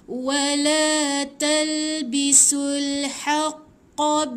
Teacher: Qaf ni dia dekat anak tekak dalam.